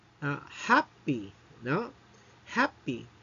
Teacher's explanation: the stress falls on the first syllable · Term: trochee